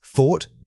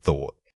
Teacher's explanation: Remember to initiate this sound by blowing a steady stream of air. The unvoiced requires minimal vocal cord vibration, making it feel like an airy whisper. Practice saying the word slowly first, focusing only on that initial breathy puff.